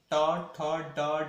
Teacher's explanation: ट वर्ग के जो व्यंजन है आपके, इसको बोला गया है मूर्धन्य